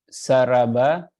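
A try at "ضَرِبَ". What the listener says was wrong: Ain fi'ilnya itu kasroh.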